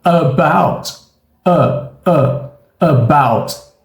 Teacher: o som da letra A que a gente tem aqui é um som neutro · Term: som do chuá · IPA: ə